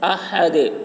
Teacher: ہا کو حلق سے ادا کرنا ہے، دال میں قلقلہ کرنا ہے.